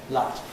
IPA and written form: lɑt (LOT)